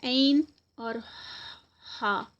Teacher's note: وسط الحلق جو ہے دس از the middle part of throat, بالکل حلق کا درمیان کا حصہ